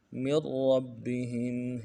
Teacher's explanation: کو موٹا کریں گے، تشدید میں زور دیں گے، مر رب، را کو بھی آگے با کے ساتھ ملانا ہے، تشدید ہے، زور دیں گے